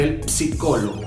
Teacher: Nosotros cuando encontramos palabras en español como psicólogo, la P jamás va a sonar. En el italiano sí la pronuncian, entonces cuando tú pronuncias ese tipo de palabras tienes que decir el psicólogo.